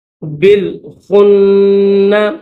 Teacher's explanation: اقسم بال، با کو لام کے ساتھ ملائیں گے۔ بالخن، خا کو نون کے ساتھ ملائیں گے اور نون کو دبا کر غنہ کے ساتھ پڑھیں گے